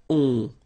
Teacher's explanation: you don't pronounce the final s, you get the on sound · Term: nasal